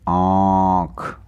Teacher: जो हवा है वो नाक और मुंह दोनों से बाहर निकल रही है · जब हवा मुंह के साथ साथ नाक से भी निकलती है तो वो कौन से स्वर होते हैं? अनुनासिक होते हैं वो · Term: अनुनासिक स्वर